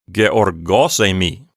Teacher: I'm putting the accent on the syllable gos and then less emphasis on the word emi